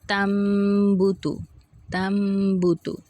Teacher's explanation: اقلاب کا قاعدہ کیا ہوتا ہے کہ نون ساکن اور تنوین کے بعد اگر با متحرک آ جائے خواہ ایک کلمے میں یا 2 کلمے میں تو نون ساکن اور تنوین کو میم سے بدل کر اخفا اور غنّہ کے ساتھ ادا کریں گے · نون ساکن تنوین کو میم سے بدل کر غنّے کے ساتھ ادا کرنا